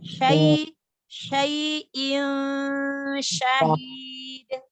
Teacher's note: Tanwin bertemu huruf shin ikhfa.